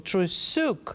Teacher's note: the emphasis goes on the last syllable